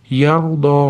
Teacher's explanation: ro tafhim yo'g'on aytamiz